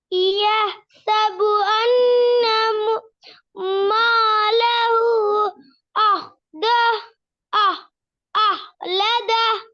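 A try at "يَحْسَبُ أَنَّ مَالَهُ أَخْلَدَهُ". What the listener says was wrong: Very good. அஹ்லதா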